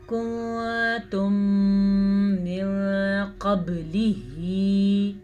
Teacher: ٹھیک ہے، یہاں پہ ادغام شفوی کا قاعدہ ہے. میم ساکن کے بعد اگر دوبارہ میم آ جائے تو دونوں کو آپس میں ملائیں لیکن غنّے کے ساتھ ملائیں · قاف کو پر پڑھنا ہے، با پہ کلکلا کرنا ہے